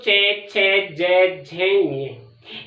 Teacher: ये सारे एक स्थान यानी कि तालु से बोले जाते हैं